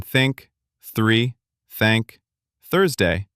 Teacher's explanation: you put the tip of your tongue lightly between your teeth, just the tip, and then you push air through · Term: soft th